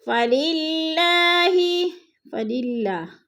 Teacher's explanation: فللہ، فللہ، اللہ باریک پڑھا جائے گا، اللہ سے پہلے لفظ لام کے نیچے زیر ہے تو اللہ کو باریک کر کے پڑھیں گے